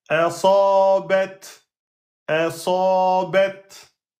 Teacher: Il n'y a pas de qalqala. Vous devez bloquer le son et ensuite laisser le souffle sortir. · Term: ta soukoun